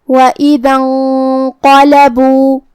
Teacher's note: قاف کی ادائیگی زبان کی جڑ اور تالوں کے نرم حصے سے ہے. قاف حروف تفخیم میں سے بھی ہے تو ہمیں اسے بھاری آواز میں پڑھنا ہے.